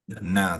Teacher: Sebab satu huruf maka kita baca satu harakatlah. Na saja jangan panjang pergi panjang kedua na ke tak boleh sebab dia tak ada apa-apa huruf mad selepasnya